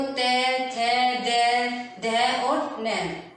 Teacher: जो हमारी जीभ दांतों को टच करे वह हमारे कौन से हो गए, दंतव्यय। आप बोलकर देखो, ते, थे, दे, ध और न।